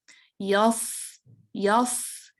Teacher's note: اس میں چونکہ ہیوینس ہے، تفخیم ہے، استعلا ہے، تو اس میں سیٹی اتنی باریکی سے نہیں نکلتی.